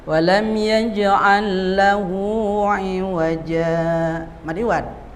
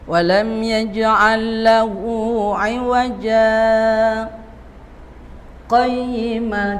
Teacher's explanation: Saktah ya. Kalau mau dibaca saktah di iwajanya dua harakat jangan didengungkan.